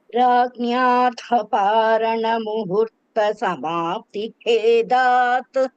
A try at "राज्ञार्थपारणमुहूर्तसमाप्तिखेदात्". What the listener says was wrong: There also Dirgha. Muhurta. Muhurta you are saying, Muhurta.